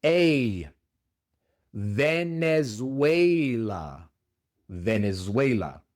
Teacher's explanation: La e es un dictongo. En lugar de e se pronuncia e como si fuera e i.